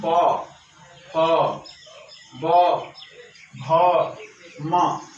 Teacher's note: दोनों ओष्ठ आपस में मिल करके जो है इन वर्णों का उच्चारण करने में सहयोग प्रदान करते हैं